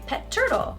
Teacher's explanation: I wouldn't usually pause between these two words it sounds very robotic I would say pet turtle it sounds